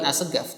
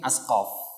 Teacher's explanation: di Sudan dan beberapa daerah lain itu mengganti qafnya dengan G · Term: qaf menjadi G